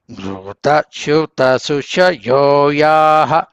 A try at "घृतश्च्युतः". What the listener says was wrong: घृतश्च्युत సకారం చెప్పాలి घृतश्च्युतश्चुच यो याः సకారము చకారము घृतश्च्युत घृतश्च्युत చకారం కూడా చెప్పండి घृतश्च्युत घृतश्च्युत